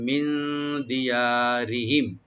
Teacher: মিন দিয়ারিহিম রাটা পাতলা করে পড়বো লাইট করে